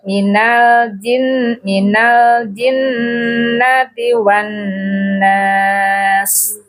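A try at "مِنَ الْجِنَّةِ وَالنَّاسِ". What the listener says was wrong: Minanya lahjanya orang Sunda. Minal orang Arab.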